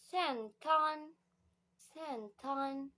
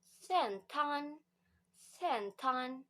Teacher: in Thailand accent, the suffix L change to N. Okay, so central become sentan, sentan.